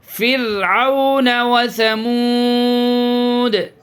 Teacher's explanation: یہ را میں قلقلہ نہیں کریں گے، آواز ایک دم بند ہو جائے گی، آواز ایک دم جام کر دیں گے، پھر آواز ہلے گی نہیں، ذرا بھی جنبش نہیں ہوگی۔